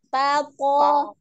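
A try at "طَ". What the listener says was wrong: Nah, jangan monyong ya, Mi. Jangan. Nah, jangan memonyongkan bibir. Pokoknya, oh, naik pangkal lidahnya. Bukan dengan memonyongkan bibir ya.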